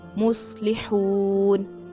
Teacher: इसको वाव मद्दा भी अदा करनी है और इसको हा निकालना है।